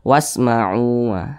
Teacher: Karena di sini ada alif, huruf wa-nya berbaris ke atas atau berbaris fathah, maka seharusnya huruf wa ini dibaca panjang. Tapi huruf wa di sini dibaca pendek, tidak dibaca panjang